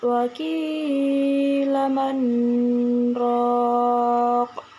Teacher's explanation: Manroq terdapat hukum bacaan saktah, yaitu berhenti sejenak tanpa mengambil nafas. Ro di sini dibaca tafhim.